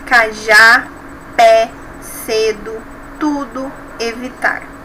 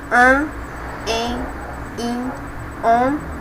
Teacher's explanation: Os nasais, eles têm esse som mais fechado, mais nasal.